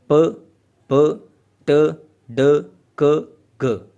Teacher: ये सारी वो वाली साउंड्स हैं जिनको प्रोड्यूस करते वक्त हमें एयर स्ट्रीम को स्टॉप लगाना पड़ता है। ये ऑटोमेटिकली एयर स्ट्रीम जो है वो आपकी वोकल ट्रैक्ट जो है उसके अंदर एक स्टॉप उसको लगता है और फिर एकदम से वो बाहर निकलती है। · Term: स्टॉप्स